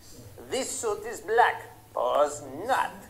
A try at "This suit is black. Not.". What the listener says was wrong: No, you don't say pause. This suit is black. That's a pause. Not.